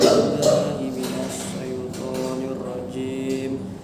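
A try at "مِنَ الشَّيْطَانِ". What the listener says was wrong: Coba minasyaiton. Jangan dikeluarin lidah. Minasyaiton.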